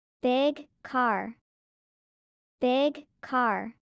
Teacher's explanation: The G in big and the K in car are throat sounds. They connect.